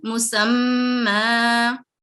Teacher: اسی طرح یہاں پر مسمن, لیکن جب ہم اس کو وقف کریں گے تو اس کی جو حرکات ہیں, یہ فتحتین جو ہے وہ فتح اشباعیہ میں تبدیل ہو جائے گی · اور پڑھنے سے پہلے ہم اس بات کا بھی خیال رکھیں گے کہ تشدید کی وجہ سے جو غنہ ہے وہ بھی کرتے ہوئے پھر ہم اس کی فتح اشباعیہ کو ادا کریں گے